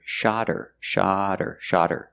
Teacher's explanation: When you hear they shot her the bird, the T changes to a fast D because the H in her is silent because her is not a stressed word.